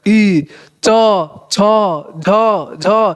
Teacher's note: ई जो है तालु से बोला जा रहा है